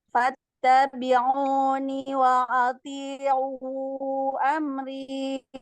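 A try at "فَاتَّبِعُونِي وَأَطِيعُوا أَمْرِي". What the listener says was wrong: Bagus. Amrinya kepanjangan dikit, 2 harokat aja. Coba diulang.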